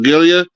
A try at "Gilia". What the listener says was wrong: It's Julia. It's Julia, not Julia. The G's not silent. The G's not silent though, so that Actually pronounce that name right.